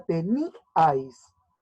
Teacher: en la palabra teníais, la I lleva mayor fuerza de voz. Por lo tanto, se va a separar de la A.